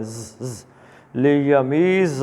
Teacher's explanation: زے جو ہے اس کو ایک سیٹی کی آواز آنی چاہیے